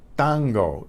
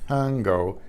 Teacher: It's not tango. There's no puff of air out.